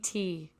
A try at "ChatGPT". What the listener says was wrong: You're saying a P. You're saying a P. no, I'm hearing it too. You're saying a fucking P.